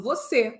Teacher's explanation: Quando eu uso o acento circunflexo, 2 e 1, eu comunico sílaba tônica, mas com timbre fechado.